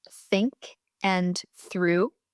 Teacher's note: The voiceless TH, like in think and through. Your vocal cords don't vibrate in this one.